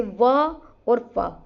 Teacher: दंतोष्ठय में क्या होगा जिसमें दांत और ओष्ठ दोनों ही मिले। तो इनको कहते हैं दंतोष्ठय वर्ण।